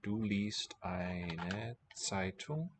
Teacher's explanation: with the voiceless T following, it's at the end of the syllable, it's a S, voiceless. Same letter, two sounds.